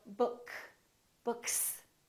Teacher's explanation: s is voiced or voiceless for example if we say book this k is voiceless therefore the s that comes after that also remains voiceless